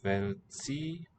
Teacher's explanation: the C is a ts sound, remember. This is not a k or a ch sound, but ts in Czech.